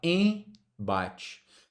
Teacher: Agora aqui, pessoal, a gente diz que esse m, ó, ou esse N só existem para nasalizar a vogal anterior. Então, quando você vai falar, por exemplo, em bate, ó, você não fala e m bate, você fala em bate. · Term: dígrafo vocálico